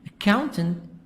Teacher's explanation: accountant stress is in the middle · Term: syllable stress